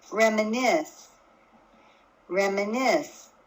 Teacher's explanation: my voice was higher in pitch on the last syllable, on the nis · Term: stressed syllable